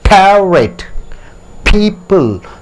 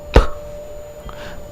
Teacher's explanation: So P sound is P. Two lips are touching each other and you are giving a bursting sound.